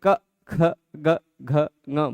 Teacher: ऐसा लगेगा कि जीभ की जड़ पर हवा प्रेशर दे रही है। ठीक है, कंठ ही जीभ की जड़ भी है, मतलब देखने के तरीके पर निर्भर करता है। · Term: जिह्वा मूल